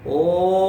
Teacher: प्रणव ओंकार को कहते हैं, तो इसका उच्चारण में 3 मात्रा का समय लगना चाहिए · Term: प्लुत